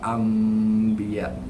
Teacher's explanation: Iqlab ada dengung, cuma dia pergi dengung tak macam wajibul gunah 100% pergi dengung. 100% dengung means you close your mouth totally 100% shut.